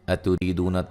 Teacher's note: را کو باریک پڑھیں گے، را کے نیچے زیر ہے اور یہ یا مدہ ہے، دو مدہ ہے، نون ساکن کا